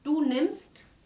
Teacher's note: Ese vocal acá está cortico. Tenemos dos consonantes después, entonces esto corta el sonido del vocal